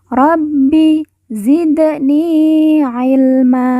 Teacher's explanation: baca pantul karena Dal sukun merupakan salah satu dari huruf Qalqalah